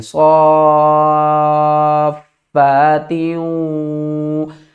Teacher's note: یہاں پر واو کے اوپر تشدید ہے تو ہم کیا کریں گے، تا کو واو کے ساتھ ملا کر غنے کے ساتھ پڑھیں گے